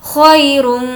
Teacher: یہاں پر کھینچنا نہیں ہے کیونکہ یہ یالین ہے